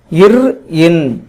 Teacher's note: மேல்வாயை நாக்கின் நுனி மிகவும் பொருந்துவதனால் பிறக்கின்றன